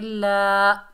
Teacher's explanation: लाम के ऊपर खड़ा ज़बर, एक अलिफ की मिकदार खींच कर पढ़ेंगे ला। साथ या लिखी हुई आई है, लेकिन जोड़ो रवा करते वक्त इसका नाम नहीं लेंगे क्योंकि ये साइलेंट है।